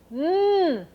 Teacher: the air will not come from your mouth the air will come from your nose